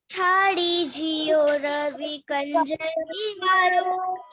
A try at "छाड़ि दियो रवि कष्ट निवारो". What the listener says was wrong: बेटा छाड़ी दियो है, हाँ जियो नहीं है और कंज नहीं है, कष्ट शब्द है वो। छाड़ी दियो रवि कष्ट निवारो